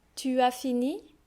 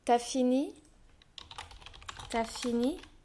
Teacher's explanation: so we drop the U only, we can do that only when it is followed by a vowel sound